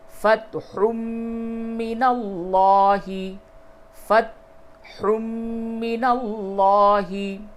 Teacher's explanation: یہ تنوین کے بعد میم آیا، ادغام مع الغنہ ہوگا